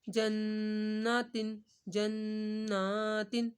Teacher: نون کو آپ نے ایک الف کے برابر کھینچنا ہے